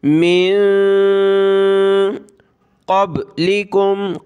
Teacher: علی الذین من قبلکم، یہ نون اس کے اوپر جزم یعنی نون ساکن کلرفل ہے، اخفا کریں گے یعنی ناک میں ساؤنڈ پیدا کریں گے ۔ من قبلکم، قاف پہ کلر ہے موٹا کرنے کا کہ